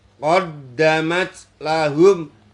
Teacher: Labi sama qaddamat adalah ada dal tasdid itu dibaca qalqalah kubra